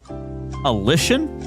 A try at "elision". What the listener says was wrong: Sounds like you're saying a Z.